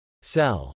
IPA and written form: sɛl (cel)